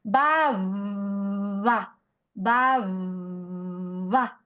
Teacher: Se puede ah acercar los labios, pero impedir el cierre total, es decir, hacer que el aire nuevamente salga en una fricción, en un rose. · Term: fricativa